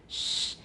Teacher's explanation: For example, it could be labialization like with sh, because in addition to the post-alveolar contact, it's not contact, approximation that we have, or it's getting very close, it's creating a fricative. So the blade of the tongue is very close to the post-alveolar region. Shh. In addition, our lips get kind of tense, and that's called labialization, 就 是 唇 化.